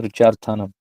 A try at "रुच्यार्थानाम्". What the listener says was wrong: हाँ, रुच्यार्थानाम मत बोला करो, रुच्यार्थानाम। आ की मात्रा नहीं है, रुच्यार्थानाम प्रियमाण।